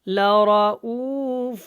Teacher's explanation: یہاں پہ را موٹا ہے اور او کو ہم نے لمبا کرنا ہے، اور یہ حمزہ ہے، عین نہیں ہے